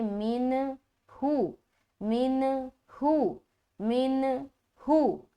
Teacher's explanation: اظہار کہتے ہیں نون کی آواز کو ظاہر کرنا، جیسے کہ یہاں پر نون ہے، اس کو ظاہر کریں گے من ہو، من ہو، من ہو، ٹھیک ہے۔